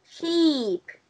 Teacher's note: Có một cái đặc điểm đấy là nó sẽ ngắn và nhanh và bật hơi.